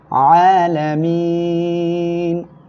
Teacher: আর আরেকটা জিনিস মনে রাখবেন, সেটা কি, এক আলিফ মদের পরের অক্ষরে যদি অক্ফের কারণে সাকিন হয় তাহলে কি হবে, মধ্যে আরজি হবে, তিন আলিফ টেনে পড়বেন, আলামিন এভাবে পড়বেন।